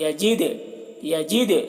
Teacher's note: أَلَمْ يَجِدْكَ، دیکھیے دال میں قلقلہ کرنا ہے، دال کی آواز ٹکرائے گی